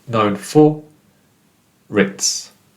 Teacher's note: So the R becomes a part of the first part of the next word.